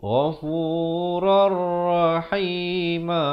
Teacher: Asalnya ghafuran. Tapi bila tanwin bertemu ra, hukumnya idgham bila gunnah, masuk tanpa dengung. Ghafurar rahima.